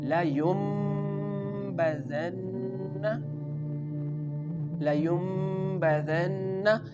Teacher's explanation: Again the noon sound changes into the meem sound.